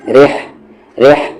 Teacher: ہا کا مخرج مڈل تھروٹ, بیچ والا حلق, اور را پر زیر ہے اسی لیے یہ را لائٹ ہوگا.